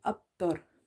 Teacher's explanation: So here in this word abtar, the qalqala is weak